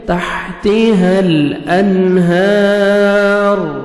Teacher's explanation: نون ساکن کے بعد حروف حلقی میں سے ہا ہے, یہاں پہ آپ نے اظہار کرنا ہے, جلدی پڑھیں گے.